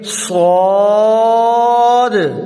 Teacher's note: سب سے بڑی غلطی جو تقریباً ہر بندہ ہی کرتا ہے وہ کیا ہے کہ صاد جو ہے نا، صاد اکثر لوگ پڑھتے ہیں صاد، موٹا بھی کیا، لمبا بھی کیا، مد بھی ادا کی، صحیح پڑھا، لیکن آخر پہ اس کے ہے دال، یعنی حروف قلقلہ آ گیا. یعنی دال ساکن ہے تو قلقلہ ہوگا، یعنی لفظ کو ہلا کے پڑھنا · سیٹی والا حروف بھی ہے اور موٹا بھی ہے